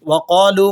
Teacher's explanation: قاف حروف مستعلیہ میں سے ہے، آپ موٹا پڑھیں گے